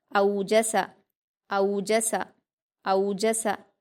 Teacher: حمزہ پر واولین ہے، اس کو ہم نرم آواز کے ساتھ جلدی پڑھیں گے